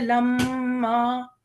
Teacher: जब भी मीम के ऊपर तशदीद आएगी हमें उस मीम को 2 मरतबा पढ़ना है, राइट, और उसके ऊपर हम थोड़ा सा नाक में गुन्ना भी देंगे, थोड़ा वज़न भी देंगे, थोड़ी देर ठहरेंगे और उसके बाद उस लफ्ज़ को अदा करेंगे।